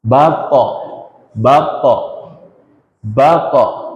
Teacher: To ketika sukun dia ada sifat qalqalah kembali.